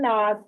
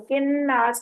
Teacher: नून पे तशदीद है, इसलिए ये नून की आवाज जो है नाक में जाएगी, गुन्ना होगा यहाँ पर, इसको गुन्ना कहते हैं।